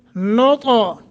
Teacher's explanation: फ़ी क़रारिन मकीन ثم غنہ کریں گے خلقنا النطفة خا موٹا قاف کو موٹا کرنا ہے نن نون مشدد ہے غنہ کریں گے نطا تا پہ قلقلہ بھی کرنا ہے موٹا بھی کرنا ہے